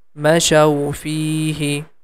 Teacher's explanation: Fi is a long sound. Because of letter ya, we have to stretch the fi sound for 2 count.